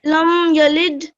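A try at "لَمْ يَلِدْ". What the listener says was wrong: اس کو لمبا نہیں کرنا، لم صرف پڑھنا، لم یلد.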